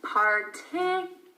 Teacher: Notice that there is a Y sound even though there's no Y in the spelling.